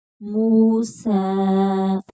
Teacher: میم کو کھینچ کر پڑھیں گے، آگے واو مدہ ہے، سین کے اوپر کھڑی زبر ہے تو اس کو بھی لمبا کریں گے ایک الف کی مقدار کے برابر۔